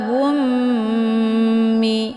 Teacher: dengan mim yang bertasdid ini dinamakan dengan Idam Mimi cara bacanya mim sukunnya dileburkan ke dalam mim yang berharakat ataupun berbaris dengan cara ditekan kemudian ditahan lebih kurang du harakathingga terbentuk suara yang mendengung wumi